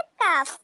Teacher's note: जुबान की जो जड़ वाला हिस्सा है वो कौवे के करीब सख्त वाले तालू से लगे। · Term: हरफे काफ